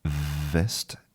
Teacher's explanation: we have our bottom lip touching our top teeth.